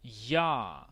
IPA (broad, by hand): ʝ